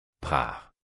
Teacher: Le R est un vibrant. En araméen, le R est roulé